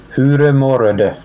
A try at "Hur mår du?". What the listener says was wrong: Why did you add an E at the end of all of them?